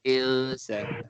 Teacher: nun mati bertemu sin ikhfa hakiki. Kita menyembunyikan sebutan asal dia dan kita mendengungkan bacaan. Jadi insa lebih kurang ing.